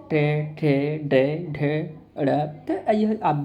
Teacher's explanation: ट वर्ग में किस प्रकार के व्यंजन हैं, आपके मूर्धन्य व्यंजन हैं